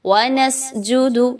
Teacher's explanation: सीन में सीटी की आवाज को लाएंगे